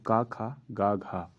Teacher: जो क वर्ग होता है वह किससे बोला जाता है कंठ से